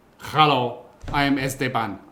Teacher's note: If your name starts with an S, most Spanish speakers will probably add an E sound in front.